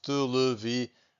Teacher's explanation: To get these nasal sounds, I'm breathing out using my mouth and also my nose. Televisão. So I can feel my nose vibrating a little bit.